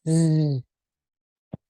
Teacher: The z sound is a buzz. It's a fricative. It's a vibration. So your tongue is in the same place in your mouth, but one has no voice. · So your tongue is in the same place in your mouth, but one has no voice. The S has no voice, but the Z is more of a vibration and includes your voice.